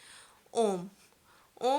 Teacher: ॐ के उच्चारण में तीन स्वरों के बराबर समय लगता है